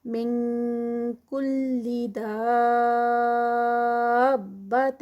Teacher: نون ساکنہ بعد کاف اخفا ہے اور اس میں کاف کی ساؤنڈ آئے گی